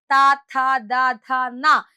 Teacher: ത എന്ന് നമ്മൾ പറയുമ്പോൾ നമ്മുടെ നാക്ക് വന്നു മുട്ടുന്നത് പല്ലിലാണ് · ത ഥ ദ ധ ന എന്ന് നമ്മൾ പറയുമ്പോൾ നാക്ക് വന്ന് മുട്ടുന്നത് പല്ലുകളിലാണ്. അതായത് പല്ലുകളുടെ സഹായത്തോടു കൂടിയാണ് തവർഗത്തിൽ പെട്ട അക്ഷരങ്ങളെ നമ്മൾ ഉച്ചരിക്കുന്നത്. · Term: ദന്ത്യം